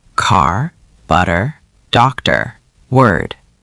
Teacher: Now, the American R is what linguists call rhotic, meaning Americans pronounce the R even after a vowel, even at the end of a word.